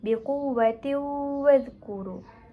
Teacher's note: Di sini terdapat tanwin bertemu waw yang ditafsirkan sebagai hukum idgham ma'al gunnah. Jadi ia harus dibaca secara dengung dan memasukkan waw